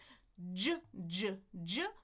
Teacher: Stop the air, let it go. Friction with voicing. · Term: j sound